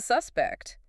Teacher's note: You used the noun form, stress on the first syllable.